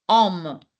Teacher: H is silent in French there is no her sound in French